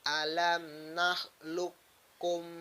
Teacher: Maka cara membacanya harus diidghamkan juga. Huruf qafnya dimasukkan ke dalam huruf kaf